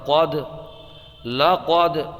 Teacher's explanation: یہاں پر دال میں قلقلہ ہوگا کیونکہ دال حروف قلقلہ میں سے ہے